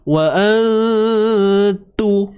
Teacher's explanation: Walhal apa yang kita faham ialah kita relax dulu, dengungkan dulu. Wa antu, baru kita pergi pada makhraj ta.